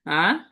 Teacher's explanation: second টোনটা, second second টোনটাকে নিচ থেকে উপরে উঠবে এরকম, রাইজিং টোন